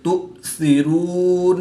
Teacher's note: حمزہ ساکن ہے جس کو جھٹکا دے کر پڑھیں گے